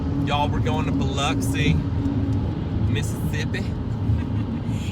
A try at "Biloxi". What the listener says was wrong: You sound like it's a U. Biloxi.